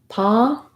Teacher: One of the errors I often hear for non-native speakers is that when you see letter O, your brain might be thinking more of an O sound or an aw sound, something rounded, and ah is just an open back vowel with no lip rounding